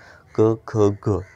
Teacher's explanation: क ख ग यांची उच्चारस्थाने कुठून निघतात, कंठातून निघतात म्हणून त्यांना कंठ म्हणतात